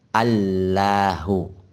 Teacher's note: mengidamkan lam yang pertama kan tadi Alil ahui alilah u-know Dian di idghomkan Lam yang pertama kepada lam yang kedua nah sehingga menjadi Allahu